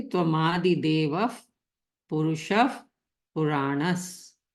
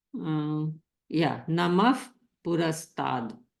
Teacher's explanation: we have Visarg before the pa sound. And for those, while reciting, we make the sound fa.